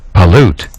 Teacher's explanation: a two-syllable word and the Bolden part over here tells you you're going to put emphasis on the last syllable the first syllable is not going to be emphasized